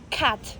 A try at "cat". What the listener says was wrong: Cat. It's like, you want to say cat, but you don't pronounce that T. It becomes silent. Cat. Cat.